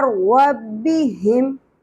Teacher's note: تو آپ نے ہا کو ہا کی طرح نہیں پڑھنا، ہم، ہا میں سانس کی آواز نہیں آنی چاہیے، وسط حلق سے نہیں نکالنا بلکہ اقصی حلق یعنی کہ حلق کے سینے کی جانب والے حصے سے گہرائی کے ساتھ نکالنا ہے